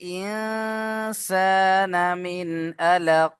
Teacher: মিন এখানে এসে গুণনা হবে না কারণ নুন সাকিনের পরে এখানে আইন এসছে